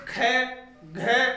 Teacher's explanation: ये हकार की ध्वनि उत्पन्न करते हैं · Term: महाप्राण